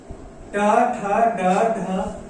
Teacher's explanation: ट ठ ड ढ मूर्धन्य, इनका उच्चारण स्थान जो है मूर्धा हो जाता है।